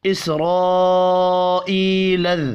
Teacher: اسرائیل، را زبر کی وجہ سے پر پڑھا جائے گا، بڑی مد کو 5 الف کے برابر کھینچ کر پڑھیں گے۔ ای یا مدہ ہے، 1 الف کے برابر، اس کو بھی کھینچ کر پڑھنا ہے۔